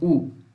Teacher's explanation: U é uma vogal fechada, posterior